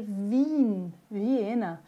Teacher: vai ter o som agora de um I estendido